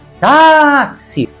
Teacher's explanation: táxi tem duas sílabas e a mais forte é a penúltima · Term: paroxítona